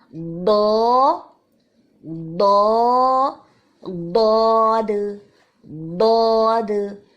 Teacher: یہ بھی بہت موٹا حرف ہے. ضاد کے لیے ہماری زبان کے جو موٹے کنارے ہیں، زبان کے جو دونوں طرف کے سائڈس ہیں، کنارے ہیں، ان کو ہم اوپر کی جو ہماری داڑیں ہیں ان کے اندرونی حصے سے لگا کے ادا کرتے ہیں